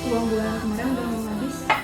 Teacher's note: fonem I dilafalkan menjadi E, sehingga bunyi kemarin dilafalkan menjadi kemaren.